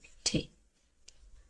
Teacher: ঠে, এখানে ট আর ঠ এর মাঝামাঝি একটা উচ্চারণ, ট আর ঠ এর মাঝামাঝি একটা উচ্চারণ, ঠে।